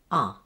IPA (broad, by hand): ʌ